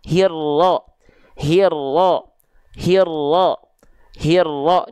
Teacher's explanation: diidgamkan dileburkan dimasukkan ke huruf ro yang ada tasydidnya tadi ya makanya ketika dilafalkan Alif lamnya sudah sudah dihiraukan saja diabaikan · Alif lamnya nggak perlu dibaca, langsung masuk ke huruf yang bertasydidnya. Makanya dari hi diabaikan nih si alif lam, langsung ke ro. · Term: idgham syamsi, alif lam syamsiyah